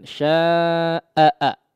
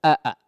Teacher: Hamzah itu awalan suaranya betul-betul terdengar jelas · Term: sifat syiddahnya